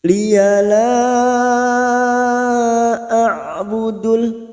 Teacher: hamzah bertemu ain, maka masuk pada huruf ain yang memiliki sifat tawasud dan jahar